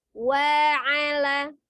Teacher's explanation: kalau bunyi wa, walaupun berharokat fathah, tetap dengan memonyongkan kedua bibir ya